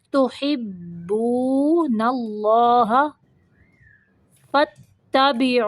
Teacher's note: اللہ کا لام موٹا پڑھنا ہے